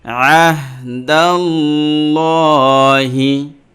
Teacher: এই যে আল্লাহ শব্দের লাম খরা জবর লকে আমরা এটা পুর করে পড়লাম মুখ ভরে।